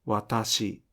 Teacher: please pronounce ta as a weakly aspirated sound even if it may sound unaspirated